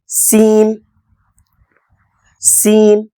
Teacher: கீழ் பற்களை சேர்த்து வைத்து சீன் சீன் இதைச் சொல்லும்பொழுது விசில் சவுண்டு மாதிரி விசில் ஊதுவது போல் ஒரு சப்தத்தை அங்கு ஏற்படுத்த வேண்டும்